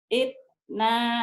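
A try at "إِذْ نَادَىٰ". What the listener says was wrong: Il, jangan it, il. Il nada.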